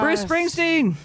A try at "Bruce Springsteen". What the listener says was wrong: Well, you didn't say Springsteen. You went Bruce Spring. didn't say Bruce Springsteen.